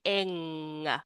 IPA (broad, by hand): ŋ